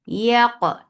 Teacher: Qaf will get sifa of qalqala and it is heavy.